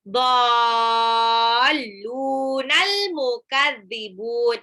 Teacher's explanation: Nah, harokat alis bertemu dengan huruf bertasjid dalam satu arti kata, dhalun itu artinya sesat, berarti dia mad lazim musaqqal kalimi. Dibaca 6 harokat.